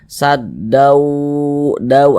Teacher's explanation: Di bagian daunya itu kita tahan, kita panjangkan sebentar. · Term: gunnah